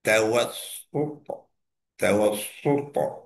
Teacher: Tawassuta dan bukan dia tebal je, dia ada kokolah pula.